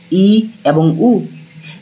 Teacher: যে সকল স্বরধ্বনি উচ্চারণ করার সময় আমাদের মুখ সবথেকে কম খোলা থাকে সেটা হচ্ছে সংবৃত